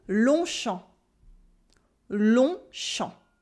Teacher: We also have a silent G and a silent P